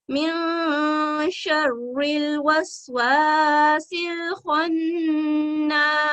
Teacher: हरूफ मदिया 2 सेकंड का वक्त देते हुए खौ को मोटा अदा करेंगे और नून के साथ मजबूती से पकड़ते हुए 2 सेकंड का वक्त देते हुए अदा करेंगे।